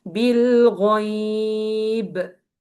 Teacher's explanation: I stretched here this ya for 4 counts, and this ba, I bounce it as medium qalqala.